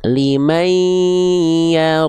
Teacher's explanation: n-nya dileburkan ke ei dengan dengung, jangan lupa ditahan dua harakat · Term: idgam bigunah